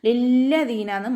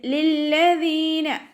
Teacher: ലില്ലദീൻ, ഇവിടെ ലാമിന് ശ്രദ്ധ വന്നിട്ടുണ്ട്, രണ്ടക്ഷരങ്ങൾ ഉച്ചരിക്കുന്ന കനം കൊടുക്കുക, പക്ഷെ മണിക്കാതെ ഓതുക കേട്ടോ. ലില്ലദീനാന്ന് മണിച്ചിട്ട് ഓതരുത്.